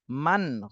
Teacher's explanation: এটা ইজহারের হরফ তাহলে নুন সাকিনের পরে খজহারের হরফ আসছে এজন্য এই নুন সাকিনে স্পষ্ট করে পড়তে হবে গুন্না করা যাবে না